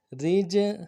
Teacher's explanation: جیم کے اوپر جب ساکن ہو تو قلقلہ کریں گے